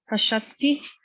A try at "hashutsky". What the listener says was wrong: Very good. Yeah, very good. See how you putting these sounds together and it's making a word.